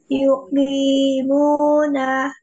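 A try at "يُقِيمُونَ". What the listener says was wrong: Panjangnya sudah betul, cuman tadi itu kof, ingat kofi, kofi, kofi, ku apa, yuki muna, coba.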